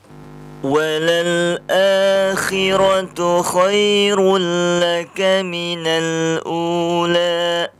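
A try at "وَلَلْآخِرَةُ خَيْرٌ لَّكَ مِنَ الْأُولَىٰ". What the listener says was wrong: Kurang itu, la-nya kurang fathah itu. Walal akhiratu khairul laka minal ula. La.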